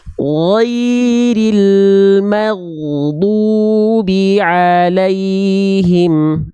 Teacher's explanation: pastikan ghain sukun itu mengalir, jangan sampai ada bunyi vokal e-nya lagi